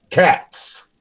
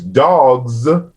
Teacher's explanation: the plural Z becomes voiceless after voiceless plosives